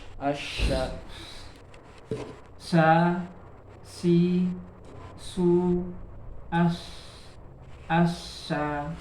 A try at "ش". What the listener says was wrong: Mungkin lidah tengahnya ini kurang dia lidah tengahnya ya. Lidah tengahnya itu kurang. Jadi suara nah itu kurang. Kurang angin.